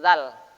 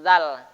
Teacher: Tidak boleh keluar desirannya. Zal ya. Di sini ujung lidah.